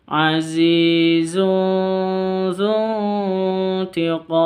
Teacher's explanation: nun sukun bertemu dengan ta, itu samar didengungkan juga karena bacaan ikhfa hakiki